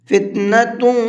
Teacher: فتنۃ ویکون، تا کے اوپر تنوین ہے اور تنوین کے بعد میں واو ہے، تنوین کے بعد اگر واو آتا ہے تو وہاں پر غنہ کر کے پڑھتے ہیں۔ فتنۃ، یہ جو بعد میں آواز نکل رہی ہے ناک میں، یہ غنہ کہلاتا ہے